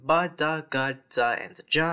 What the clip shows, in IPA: b d g dz dʒ